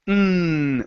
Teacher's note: the N is a voiced sound n when it's voiced it makes a vibration in your throat